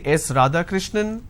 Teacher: when you are responding with a rising tone it doesn't sound like a statement · now it goes on a rising tone now it doesn't come as an answer it comes as a guess or it comes as a question am i right is this